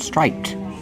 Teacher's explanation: Stripes is the name of the pattern. But if I describe the shorts, I say striped, with ED making the T sound